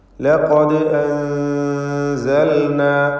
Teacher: ലഖദ് അൻസൽനാ, ഇവിടെ ലഖദ് എന്ന് പറയുമ്പോൾ ഖാഫിന് തഫ്ഖീം കൊടുക്കേണ്ടതാണ്. തടിപ്പിച്ച് സ്വരഭാരത്തോടെ ഉച്ചരിക്കേണ്ട അക്ഷരമാണ് ഖാഫ്. ദാലിൻ്റെ സുക്കൂൻ ഖൽഖല സുഗ്റ നൽകി ശബ്ദം ഹറക്കത്ത് പോലെ ചലിപ്പിക്കണം. · തടിപ്പിച്ച് സ്വരഭാരത്തോടെ ഉച്ചരിക്കേണ്ട അക്ഷരമാണ് ഖാഫ്. ദാലിൻ്റെ സുക്കൂൻ ഖൽഖല സുഗ്റ നൽകി ശബ്ദം ഹറക്കത്ത് പോലെ ചലിപ്പിക്കണം. ലഖദ് അൻസൽന, ഈ പദത്തിൽ സാക്കിനത്തായ നൂനിനെ ഇഖ്ഫാ ഹഖീഖി നൽകി മറച്ചു മണിക്കണം, അവ്യക്തമാക്കി മണിച്ചുകൊണ്ട് ഉച്ചരിക്കണം.